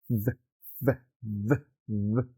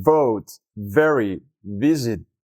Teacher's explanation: necesitas hacer que tus dientes de arriba toquen ligeramente tu labio de abajo